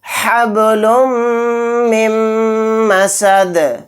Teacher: یہاں پر نون کو سائلنٹ کر دیں گے، میم کو میم میں ملا کر پڑھیں گے ، میم پر تشدید ہونے کی وجہ سے، میم میم زیر